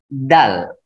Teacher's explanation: Dal ujung lidah bertemu dengan di belakang gigi.